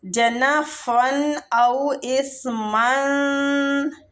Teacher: جنفن میں جو تنوین ہے اس کو ہم اظہار کے ساتھ پڑھیں گے، آگے حمزہ حروف ہلکی آ رہا ہے۔